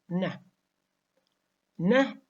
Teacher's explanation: voiced alveolar nasal or nasal stop again it is a it is voiced alveolar nasal or nasal · produced when the vocal chords are vibrating now is alveolar because it is produced when the tip and blade of top of the tongue are closed to the alveolar Ridge · na is nasal because it is produced by allowing air to escape through the nose